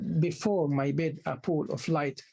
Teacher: The first syllable is unstressed. The second syllable is stressed. So the second syllable should receive the stress the accent. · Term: amic tetrometer